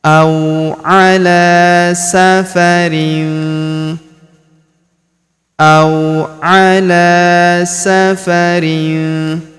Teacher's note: huruf la kita panjangkan dua harakat karena terdapat alif kecil di atasnya.